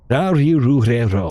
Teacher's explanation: the R is not the typical English R sound. It's more of a cross between an L and an R sound.